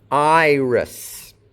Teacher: Note that iris ends with an S sound, not a Z.